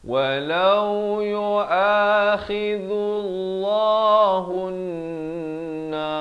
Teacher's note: Hun di sini dengung dulu dua harakat